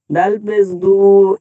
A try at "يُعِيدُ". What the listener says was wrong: দালে টান হয়ে গেল। দাল পেস দু। দাল পেস দু।